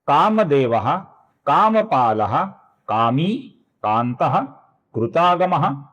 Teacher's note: अब यहां पर ध्यान से देखिए, सर्वप्रथम नाम है कामदेवः, जिसके विसर्ग का आगे क आने के कारण अपूर्ण ख ऐसा उच्चारण हम करते हैं। उसी प्रकार कामपाला का जो विसर्ग है, इसका भी हम अपूर्ण ख ऐसा उच्चारण करेंगे, क्योंकि आगे क आया हुआ है।